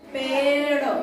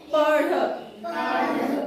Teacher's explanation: जीव जो है थोड़ी सी मुड़ती है और टकराती है